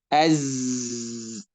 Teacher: اس طرح آپ دیکھیں کہ از زا ہے، از کر لو. تو زا میں آپ دیکھیں آواز چل رہی نا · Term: صفیر